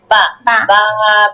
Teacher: ভিজা জায়গা থেকে উচ্চারণ হবে বা